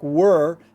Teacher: try to get that American R, tongue going back